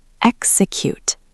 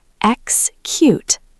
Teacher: It has that K and S sound mixed together.